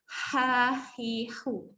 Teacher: Ni kita panggil dia ha pedas. Angin keluar dulu baru ada bunyi.